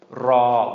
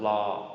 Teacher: in spoken Thai or kind of informally speaking Thai, the ra will become a la, an L sound